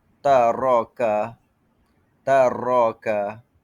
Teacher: Seterusnya takrir getaran hujung lidah pada ra.